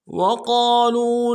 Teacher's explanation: قاف کو موٹا کریں گے، قاف کے ساتھ الف مدہ ہے، ایک الف میں کھینچیں گے ، لام کو واو کے ساتھ ملانا ہے، واو مدہ ایک